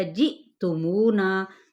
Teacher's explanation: جی پہ یہاں پہ حمزہ پہ جھٹکا دیا جائے گا، مو پہ واو مدہ اور نا پہ الف مدہ۔ مراد کیا ہے اس سے کہ ان دونوں کو ہم نے ایکولی کھینچنا ہے، ایک الف یا پھر 2 حرکات کے برابر ہی۔